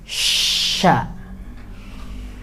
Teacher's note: tengah lidahnya nempel ke langit-langit atas. Setelah menempel tengah lidah ke langit-langit atas, ada udara yang menyusul dan pecah di tengah lidah. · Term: tafasyi